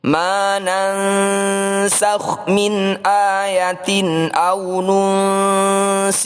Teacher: Ketika kita membunyikan nun sukun, lisan kita sudah siap untuk melafalkan huruf sin. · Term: ikhfa hakiki